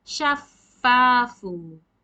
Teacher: you need to keep your two upper incisors on the lower lips and blow the air